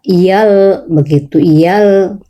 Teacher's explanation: Yang satu satu huruf sebelum, yaitu ya, iyal, begitu, iyal, tapi nggak usah lama-lama karena lamnya itu bukan huruf gunah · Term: tasdid